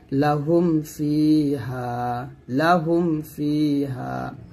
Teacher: মিম সাকিন ইজহার হচ্ছে যে বা ও মিম ব্যতীত অন্য হরফ আসলে, অর্থাৎ মিম সাকিনের পরে যদি বা ও মিম ছাড়া অন্য হরফ আসে তাহলে তাকে মিম সাকিনের ইজহার বলা হবে। আর মিম সাকিনের ইজহার তথা স্পষ্ট করে পড়তে হবে, অর্থাৎ এখানে গুণনা আদায় করা যাবে না, গুণনা আদায় না করে পড়তে হবে।